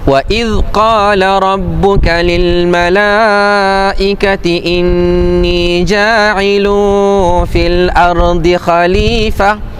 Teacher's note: Jadi pada yang lil malaikah boleh baca empat ataupun lima harakat. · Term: mad